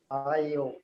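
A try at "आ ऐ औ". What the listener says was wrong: देखिए उच्चारण पहले समझिए। ये जो आ, आई, ए नहीं बोलेंगे, इसे आई बोलेंगे क्योंकि ये बड़ा है।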